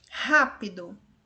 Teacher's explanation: É a Antepenúltima sílaba que é a mais forte, ela é proparoxítona, então é acentuada sim.